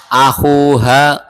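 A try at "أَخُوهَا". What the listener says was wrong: Hanya panjang ya? Oh, bukan, haknya yang panjang. Antum akunya udah bener. Hanya kurang panjang.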